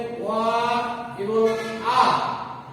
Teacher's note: যেহেতু গলার থেকে বা কণ্ঠ মানে গলা, গলার থেকে বা কণ্ঠ থেকে উচ্চারিত হয়, এই জন্য এর নাম হলো কণ্ঠধ্বনি। ওয়া আকে বলা হয় কণ্ঠধ্বনি, কারণ কণ্ঠ বা গলা থেকে উচ্চারিত হয় বলিয়া